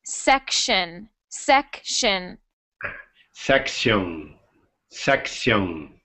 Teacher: we make that CT sound like a sh.